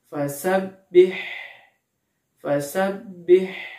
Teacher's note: Pada huruf h-nya kita akan merasakan adanya nafas yang mengalir. Kemudian kita coba pegang tenggorokan kita, maka pasti tidak akan bergetar. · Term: sifat hamas